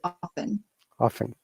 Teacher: we don't say the t we would just say often often so it must be some